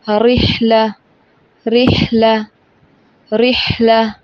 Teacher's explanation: را کے نیچے زیر ہو تو را کو باریک پڑھیں گے